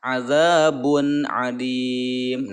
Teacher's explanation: bun idhar ya. Jelas bacanya, tidak ada dengungan